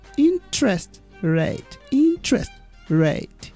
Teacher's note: it's a compound noun so we stress the first word